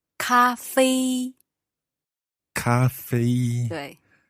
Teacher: those are both high tones